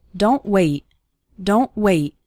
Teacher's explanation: a T sound at the end of a word, sounding just like a sudden stop and not necessarily like t.